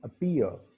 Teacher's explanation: Okay, तो अपीयर, अपीयर हम नहीं बोलते हैं, हम क्या बोलते हैं, हम बोलते हैं अपीयर। प साउंड उसमें इनकी आ रही होती है, उसमें एस्पिरेशन नहीं होती। तो इसी तरह से वॉइसिंग भी उनमें क्या होती है, कम होती है।